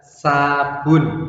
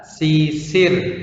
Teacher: sifat dari huruf sin itu tipis ya, atau dikenal dengan tarkik